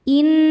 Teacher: Cara membacanya didengungkan, bunyi n, tahan sampai ada suara masuk hidung kurang lebih 2 harokat. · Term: gunnah musyaddadah